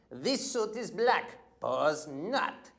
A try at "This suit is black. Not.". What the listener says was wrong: No, you don't say pause. This suit is black. That's a pause. Not.